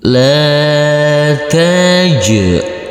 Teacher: Huruf jim yang bersukun ini kita pantulkan karena ini adalah bacaan qalqalah.